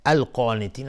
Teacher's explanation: قاف از حروف استعلاء غلیظ تلفظ میشه، الف هم تابع قاف غلیظ